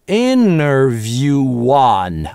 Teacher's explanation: а вот здесь у нас вылезает на стыке linking [w], потому что view это долгий /uː/. Дальше гласный.